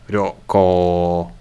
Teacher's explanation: the first one was short and the second syllable was long